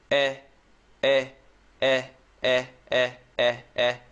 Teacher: Eh, eh, is a little bit more closed, so you want to remember that. Also, for this short E sound, the tongue is totally relaxed